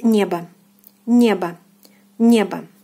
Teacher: So here the stress falls on the first syllable